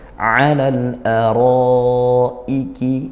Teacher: Hati-hati, setelah mad wajib, mad jaiz, hamzahnya tetap dibaca kuat. Alal araiki, ya, jangan alal araiki, nah itu kurang syiddahnya hamzahnya.